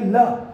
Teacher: पार्श्विक छात्वा, उच्चारण में हवा जीभ के दोनों पार्श्व से, जीभ है इसके दोनों पार्श्व से होके निकल जाती है, वो पार्श्विक है।